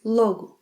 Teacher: 'Logo', with a closed 'o' sound, is a symbol used to identify products, organizations